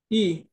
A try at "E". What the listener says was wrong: ই তো না, এটা হচ্ছে এ। এ উচ্চারণ ইংলিশে ঠিক আছে কিন্তু এ। আর এ কে আমরা বলি জার্মানি কি বলি, আ। আর থামো, জার্মান যেটা আ, ইংলিশ যেটা এ, এটা হচ্ছে আ। তো আমরা উচ্চারণ গুলো জার্মানে করতে হবে, তাহলে আ হচ্ছে এটা, আ মানে গোসল করতেছে, এটা হচ্ছে আ। আর এ যেটা, এটা হচ্ছে দৌড়াতেছে, জগেন।